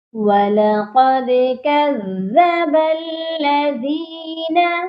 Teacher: دال پر ہم نے قلقلہ کرنا ہے کیونکہ دال ساکن ہو گئی ہے،